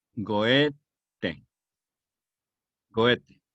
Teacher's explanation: Que se pronuncia, si quieren pronunciarla en genuino alemán, pues la OE suena entre O y E. Es un sonido ambiguo que nosotros no tenemos.